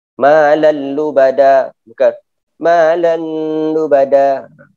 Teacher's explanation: Jumpa dengan 2 huruf. Lam dan ra. Maka tidak ada dengung di situ.